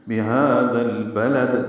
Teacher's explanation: لام ساکن پہ اظہار ہے اور آخر میں دال ساکن پہ قلقلہ ہے